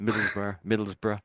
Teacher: I'm not really saying borough on the end. I'm saying Middlesbrough, bruh. So it's more like I'm saying bra almost at the end here. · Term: a bruh sound